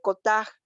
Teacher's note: no es solo cotaj, sino tiene un acento, una glotalización en la palabra